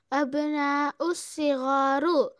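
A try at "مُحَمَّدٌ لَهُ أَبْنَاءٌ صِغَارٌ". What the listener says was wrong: आप मिलाते क्यों है? अलिफ लम नहीं है तो नहीं मिलाना है।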